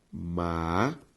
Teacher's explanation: A sílaba tônica de amável, má.